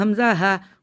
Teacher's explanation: یہ حمزہ ہا آخری حلق سے ادا ہوتے ہیں، یعنی کہ جو سینے کی جانب ہمارا حلق ہے وہاں سے ادا ہوتے ہیں